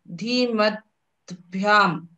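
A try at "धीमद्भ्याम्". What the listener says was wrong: Dhimad. Third letter. Ta will get converted to Da. Dhimad Bhyam.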